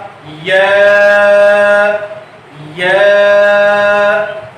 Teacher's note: یا کا مخرج ہے کہ زبان کا درمیان جب تالو کے درمیان کی طرف اٹھتا ہے تو یہ ادا ہوتا ہے اور یہ ثنائی حرف ہے، اس لیے اس کو 1 الف لمبا کر کے یوں پڑھا جائے گا یا.